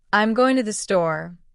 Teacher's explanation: you would emphasize going and store more than I'm and to. This is what we call stress.